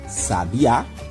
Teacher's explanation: a palavrinha sabiá, onde a última sílaba é a que nós falamos com mais força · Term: sílaba tônica